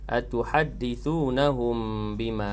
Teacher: Mimati bertemu dengan ba, hukum dia ikhfa syafawi dengan bacaannya sekadar 2 harakat